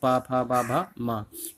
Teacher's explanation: जब हमारे ओंठ होते हैं आपस में एक दूसरे के स्पर्श करते हैं, तब इनका उच्चारण हो पाता है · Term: ओष्ठ व्यंजन